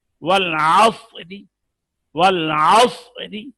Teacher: را مرامہ، وقف بالروم، جب زیر کے ساتھ کیا جائے